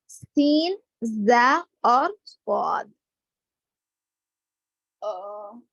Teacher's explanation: जुबान की नोक नीचे के दांतों के अंदरूनी हिस्से को लगेगी और बीच का कुछ हिस्सा ऊपर तालु को लगेगा